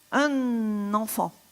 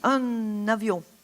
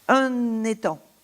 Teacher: en prononçant le N comme s'il faisait partie du mot suivant